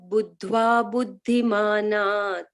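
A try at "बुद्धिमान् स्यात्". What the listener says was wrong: Etad buddhva buddhiman syat. Buddhiman syat. The ta is here. Etad buddhva buddhiman syat.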